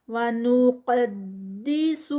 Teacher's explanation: قاف ہیوی. قدی دال لائٹ، سو اور سین بھی لائٹ